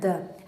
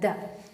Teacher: दंत से भी रिलेटेड, स्पर्श भी हो रहा है दंत में, सघोष भी है और साथ ही साथ अल्प प्राण भी है। द ऐसे कर दे रहे हैं ना, द ऐसा नहीं है द, इतना तेज से नहीं कहना पड़ रहा है, द।